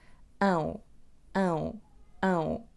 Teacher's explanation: Na palavra limão temos o som ão. O som A vai ser nasal, então dizemos a. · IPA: ɐ̃w̃